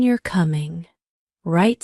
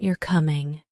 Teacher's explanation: For example, the question "you're coming" right sounds different from the statement "you're coming." Right, the first one has a rising intonation, and the second has a more neutral tone.